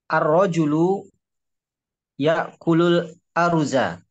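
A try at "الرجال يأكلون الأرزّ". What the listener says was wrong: Za-nya ditasdid. Ar-rijalu ya'kuluna al-aruzza.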